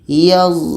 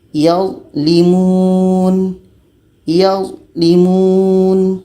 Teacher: Karena za ini sifatnya jahar, tertahan anginnya.